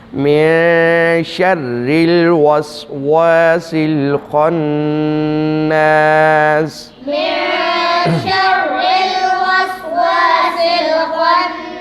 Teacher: را کو باریک پڑھیں گے، شرل را کے نیچے زیر ہے اس لیے اس کو باریک پڑھیں گے